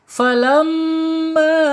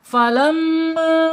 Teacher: Saya praktekkan ya, saya pencet hidung saya nih. Falamma ya, nggak masuk hidung, tapi kalau falamma itu masuk hidung ya. Jadi nanti gagal, al-jaubnya menjadi gagal.